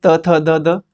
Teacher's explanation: त बोलते हैं तो जीभ हमारी टच होती है दांतों से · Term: त्वर्ग